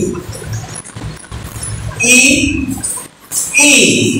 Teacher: जिह्वा बीच में से उठकर तालु की ओर इंगित होती है, तालु को स्पर्श करती है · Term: तालव्य वर्ण